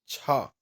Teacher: तो छा ध्वनि का उच्चारण स्थान तालव्य से है। छा यानी तालव्य से इसके उच्चारण हो रहा है।